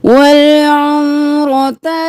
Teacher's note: उम्रता नहीं करना मीम साकिन रखना है रो मोटा वल उम्रता रो मोटा और ता ज़बर ता जल्दी से